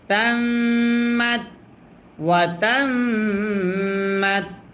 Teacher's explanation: মিমে যদি তাসদিদ হয় গুন্না করা ওয়াজিব হয়